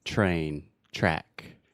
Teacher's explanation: the TR sound in English normally makes what I would call the CH sound